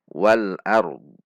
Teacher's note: Lidah kita langsung di titik dhad karena huruf dhadnya disukunkan.